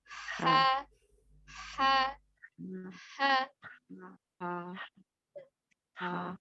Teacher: Sementara huruf H termasuk al-halki dari tenggorokan. Ya, khususnya tenggorokan bagian tengah.